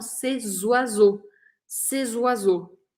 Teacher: esse C no plural, C-E-S, quando a próxima palavra começa com vogal, eu grudo o som delas. O som fica meio grudadinho.